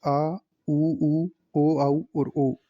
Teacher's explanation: जीभ के पीछे वाले भाग से बोले जाने वाले जो स्वर होते हैं वह पश्च स्वर कहलाते हैं इनकी संख्या छह होती है आ उ उ ओ औ और